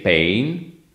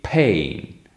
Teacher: every time English speakers say the word pain, they also add a glottal sound after p. So they don't say pain, like an Italian would say, because we don't have this thing, but they say pain. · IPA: [pheɪn]